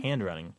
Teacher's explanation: drop the d off there hand running there's like a a a pause that's forced in there between that D and the r sound